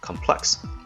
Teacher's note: Complex is the pronunciation when used as a noun, and when used as an adjective, just like how it is in the passage, the stress is placed on the second syllable